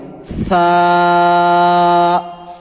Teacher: دونوں دانتوں کے بیچ میں ہلکی سی دبا کر ہوا کو باہر نکالیں گے